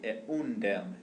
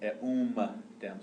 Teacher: So the M turns into an N in front of the D.